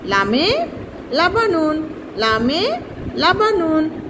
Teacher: উপরে চারটি দাঁতের গোড়ার সংলগ্ন, তালুর সাথে জিব্বার অগ্রভাগের কিনারা লাগাইয়া লাম উচ্চারিত হবে।